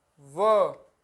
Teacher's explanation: दंत प्लस ओष्ठ यानी कि दंतोष्ठ, जो दांत और होठ दोनों का प्रयोग हो जिनके उच्चारण में